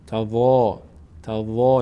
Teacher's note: وا از اون 8 حرفی که وقتی که فتحه داشته باشه بعدش الف پر خوانده میشه، الفش پر میشه